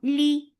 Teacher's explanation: for kasra give E sound, the sound is short.